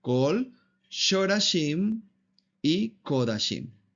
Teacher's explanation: no se pronuncian como A, sino como O, es decir, una vocal corta